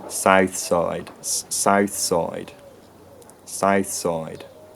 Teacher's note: And in West Country accents today, and in High Tider accents today, the vowels start in a fairly peripheral position by the sound of it.